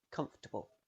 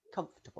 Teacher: But it often isn't pronounced at all. You link directly from the F to the T